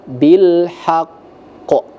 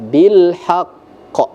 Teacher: harus dibaca bilhaqqo ditahan dulu baru dilepas bilhaqqo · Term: qalqalah